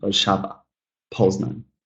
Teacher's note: in each of these cases, you will see that the stress is actually on the penultimate syllable